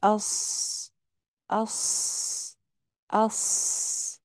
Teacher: صاد کیونکہ موٹا حرف ہے تو اس کے اندر آواز تھوڑی موٹی ہو جائے گی